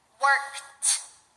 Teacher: You put 2 voiceless sounds together. The voiceless consonant at the end of the base form of the verb, and then the ed is pronounced like a T.